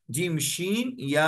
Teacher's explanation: یہ زبان کے بیچ والے حصے کو اوپر لگائیں گے تو جیم، شین، یا ادا ہوتے ہیں، جیم، شین، یا، جیم، شین یا سین نہیں، تین نقطے والی شین.